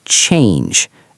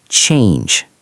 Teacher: It starts with a strong ch sound like the word chair or chocolate and ends with a soft j sound.